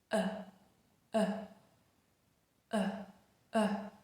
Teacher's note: the schwa is right in the center. This central position means it's a very neutral sound. · It's not high and fronted like e and it's also not low and back like for instance a a very useful reference point is the level of the lower teeth uh uh uh so the tongue should be flat and level with the lower teeth. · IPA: /ə/